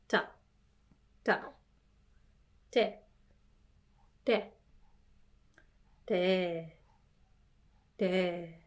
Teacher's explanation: remember it's not aspirated T